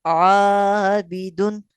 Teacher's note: یہاں الف باریک پڑھا گیا ہے کیونکہ الف سے پہلے والا حرف حروف مستعلیہ میں سے نہیں ہے یا کسی اور وجہ سے موٹا نہیں ہے، لہذا اس لیے عابدن، ٹھیک ہے۔